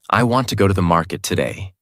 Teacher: Every word sounds equal. Same energy, same importance. This makes your speech sound flat and robotic.